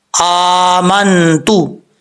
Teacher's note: حمزہ کے اوپر کھڑا زبر ہے، ایک الف کی مقدار، اس کو لمبا کریں گے